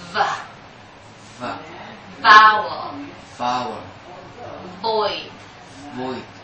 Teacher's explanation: With V, there's also vibration before you blow the air. But this time, just like you produce the sound of TH, you bite your lips gently, but you produce vibration.